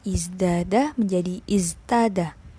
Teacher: Jadi tahawwalat ta ila dal litumathil az-zai fil jahr. Jadi dianggap sama-sama berat. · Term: al-mumatsalah